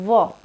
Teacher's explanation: ऊपर वाले जो दांत है, नीचे वाले होठ है, उसको टच हो रहे हैं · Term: दंतोष्ठ